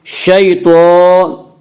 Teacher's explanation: تو کے پر کھڑا زبر ہے، کھڑا زبر کو ایک الف کے برابر کھینچ کر پڑھیں گے۔ · یالین وہ یا جو ساکن ہو اور اس سے پہلے زبر ہو، یالین کو نرم آواز کے ساتھ پڑھیں گے۔